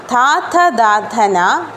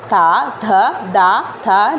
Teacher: നമ്മൾ പല്ല് ഉപയോഗിക്കുന്നുണ്ട് അതുകൊണ്ടാണ് നമ്മൾ ഇതിനെ ദന്ത്യം എന്ന് പറയുന്നത്